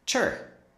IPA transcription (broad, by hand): chər